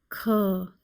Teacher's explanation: It is a velar letter with aspiration. So back of the tongue touches the soft palate and aspiration is also there.